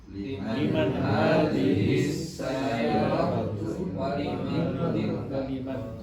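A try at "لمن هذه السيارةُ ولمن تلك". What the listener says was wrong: Saya ulangi ya, karena sayyaratu, jangan sayyaroh ya Pak ya. Ingat ya.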